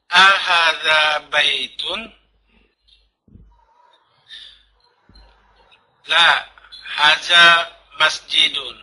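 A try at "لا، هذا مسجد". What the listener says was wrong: La, hadza, dzanya antum makhrajnya kurang tepat.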